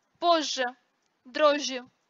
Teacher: Сочетание «з», «ж» и «ж», «ж» внутри корня всегда превращаются в долгий мягкий «ж».